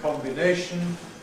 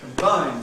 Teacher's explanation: And also in the first syllable, [ɒ] in ‘combination’ [ˌkɒmbɪˈneɪʃn̩] but [ə] in ‘combine’ [kəmˈbaɪn].